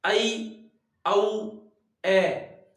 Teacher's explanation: अर्धविवृत में उच्चारण करने पर मुख का विवृत से थोड़ा कम खुलता है